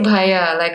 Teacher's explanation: H after a consonant is unheard of in most South Indian languages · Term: the H after the consonant